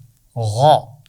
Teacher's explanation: غین کی آواز غ ایک موٹی آواز ہے اور یہ ادا ہوتی ہے گلے کے اوپر کے حصے سے، وہ حصہ جو چہرے کے ساتھ، فیس کے ساتھ جڑ رہا ہے نا۔